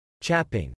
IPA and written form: t͡ʃæpɪŋ (Chapping)